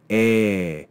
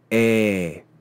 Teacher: the sound of the ETA which is just long in length eh and that's to compare with Epsilon which is short e